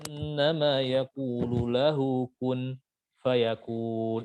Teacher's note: orang-orang penduduk Madinah itu membaca kun fayakun itu waqaf di lafaz kun ya. Waqaf sempurna, waqaf kafi.